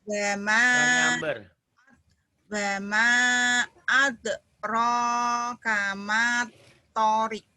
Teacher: Matobinya jadi pendek karena ketemu samsiah, ketemu tasdid.